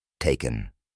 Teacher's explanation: El segundo sonido es el schwa, un sonido neutro que aparece en sílabas no acentuadas. Recordemos que se produce con la boca y los labios relajados y abiertos solo un poco.